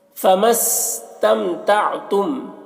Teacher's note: تم کے میم میں اخفاء شفوی ہو رہا ہے، اسے غنہ اور اخفاء کے ساتھ میں پڑھیں گے